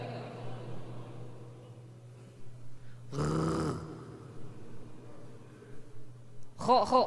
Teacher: kalau k mah dia nafas tulen 100% nafas